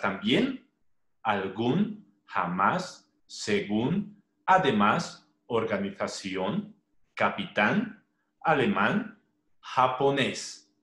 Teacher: la mayor elevación de voz está en la última sílaba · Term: palabras agudas